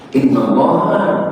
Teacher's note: lafaz Allaha dibaca ha bukan hu bukan hi